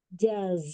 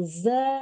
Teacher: Jim dari tengah lidah kemudian e berbeda makhrajnya dari ujung lidah ke hampir ke gigi seri bawah